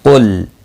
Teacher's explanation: قاف مستعلیہ ہے، پر پڑھا جائے گا